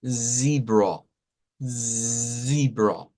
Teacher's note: sonido no es la z que usted y yo conocemos esto es una s vibrante